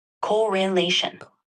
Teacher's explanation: that word is pronounced correlation with the emphasis on the third syllable